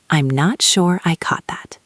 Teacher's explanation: Notice that the stress is on the word sure and the word caught.